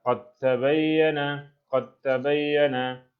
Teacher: Itu seolah kita kasih qalqalah kubra. Tapi dimasukkan dal dengan ta.